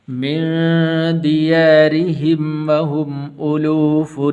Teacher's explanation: را کے نیچے زیر ہے تو اس لیے اس را کو پر کر کے نہیں پڑھنا بلکہ باریک کر کے پڑھنا ہے۔ مِن دِيَارِهِمْ وَهُمْ أُلُوفٌ، وَهُمْ أُلُوفٌ، یہاں پر غنہ نہیں کریں گے اس لیے کہ آگے حا حروف حلقی میں سے ہے۔